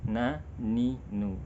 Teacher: ketika berharokat pun ya, gunnah pada nun masih tetap melekat. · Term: gunnah anqas